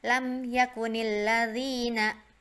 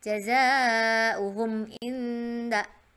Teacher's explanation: Jadi lam mimnya jelas ya, nggak didengungkan. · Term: izhar syafawi